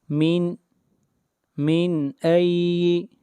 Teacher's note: نون کو ظاہر کر کے پڑھیں گے، نون ساکن کے بعد حروف حلقی میں سے حمزہ ہے، اس لیے یہاں پر اظہار ہوگا۔